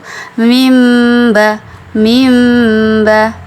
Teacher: ada dengungnya kemudian bibir kita tidak rapat ya bibirnya tidak rapat pertemuan apa ee di tengah-tengah antara mim dan ba kalau kita · bibir kita ketika mengucapkannya itu tidak terlalu rapat jadi masih ada benggangan sedikit atau masih ada rongga di antara kedua bibir itu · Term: ikhfah Syafawi, ikhfa syafawi